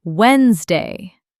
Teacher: I want to say every letter. It's actually pronounced Wednesday. The first D is silent.